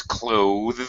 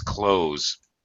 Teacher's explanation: with the voiced TH sound, tongue out on the top teeth, pressing against the top teeth